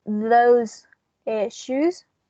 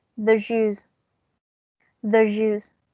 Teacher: And now, last but not least, when we have a za, and it's followed by a sha or j, we are going to change the za into a j